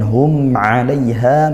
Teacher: hum 'alaiha, mim sukun, di sini izhar syafawi, dibaca jelas mim sukunnya